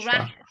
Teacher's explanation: when we have like a u and it's a short vowel we're going to make it into an ah